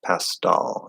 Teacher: it's more of a D sound pastel pastel but it's not flapped